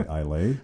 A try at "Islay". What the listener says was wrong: Islay instead of Isla. Isla.